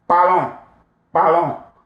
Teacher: The S here is silent. And then you pronounce the O-N as a nasal vowel